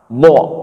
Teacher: Tepi lidah, samping lidah, ya, kita angkat dan tempelkan ke geraham atas. Dha, ya. Huruf dhad itu ada dua tempat, artinya ada dua anggota bagian mulut kita yang bermain, yang bergerak.